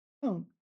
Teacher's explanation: this is fourth tone, and you can use it first tone as a variant of this